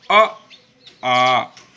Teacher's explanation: हवा जब कंठ से टकराए, कंठ से बाहर निकले, तो अ, आ इन दो स्वरों का उच्चारण होता है